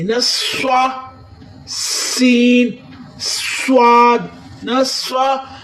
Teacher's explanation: وَيُقِيمُونَ الصَّلَاةَ، موٹا کرتے ہوئے سواد کو، سین کی سیٹی کی، سواد اور سین کو سیٹی کی بھی آواز دینی